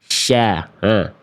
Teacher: Nih, kalau teman-teman melafalkannya jadi huruf shin, teman-teman sekalian, makhraj huruf shin itu dilafalkan dari tengah lidah, diarahkan ke langit-langit di atasnya